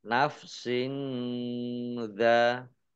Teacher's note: Kasroh tanwin bertemu dengan huruf zal, bacaan ikhfa, dibaca samar-samar. Dal fathah alif mat tobi'i, tetapi karena bertemu dengan huruf hamzah dalam satu kata, maka menjadi mat wajib muttasil.